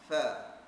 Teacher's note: Makhraj huruf fa ialah bibir mulut dalam ya sebelah bawah mengenai hujung gigi gunting sebelah atas